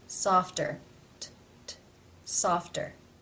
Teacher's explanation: it comes at the end of a syllable in a consonant cluster F T therefore as it is part of this cluster it is pronounced as a real T sound